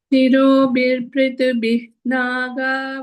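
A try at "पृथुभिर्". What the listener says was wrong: Prithubhir, no, Prithubhir. Visarga's R should happen.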